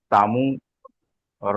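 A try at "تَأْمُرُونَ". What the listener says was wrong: এখানে দেখেন, আপনারা মাদ্দাগুলো টান দিচ্ছেন না, সেখানে ডান দিকে পেশ এসেছে, তাই একে একালিপ টান দিয়ে পড়তে হবে।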